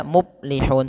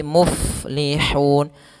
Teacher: Muf, ada fa mati sukun, harus dialirkan nafasnya. Uf, jangan dibaca muplihun tapi muflihun.